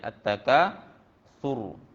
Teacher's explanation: ra itu dimatikan dengan bunyi yang tebal. Ra itu mati dengan tebal ya. At-Takasur, tebal.